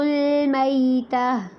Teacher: میتا میں یا ساکن سے پہلے زبر ہے تو لین ہوگا، یعنی کہ نرمی سے پڑھنا ہے